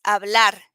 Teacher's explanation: the h doesn't have a sound in spanish